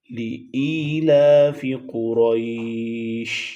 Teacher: شین کی آواز میں یہ خاصیت ہے، شین کی صفات میں ہے کہ اس میں آواز پھیلتی ہے